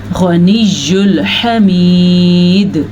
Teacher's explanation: غین پر پڑھا جائے گا اور وقف کی وجہ سے دال پہ کلکلا پیدا ہوگا